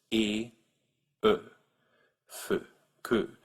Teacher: There's a fourth rounded vowel, that's as in que, which is based on the tongue position of French's e. Your tongue should be way up in the front, fairly high up, e, and then you round your lips